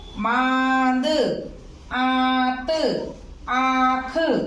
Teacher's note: वायु नाक और मुख दोनों से आती है। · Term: अनुनासिक